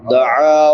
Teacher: عین اس سے حلق کے درمیان سے ادا ہوتی ہے۔